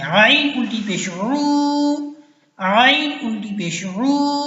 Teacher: عین حلق کے درمیان سے نکلے گی، گلے کے درمیان سے